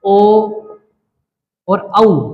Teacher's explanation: ओ और औ, इनको हम कंठ यानी गले और ओष्ठ यानी होठ से ही बोल सकते हैं।